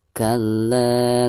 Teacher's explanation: Kalla mad tabi'i karena ada harkat fathah la berhadapan dengan alif sukun, dibacanya 2 harokat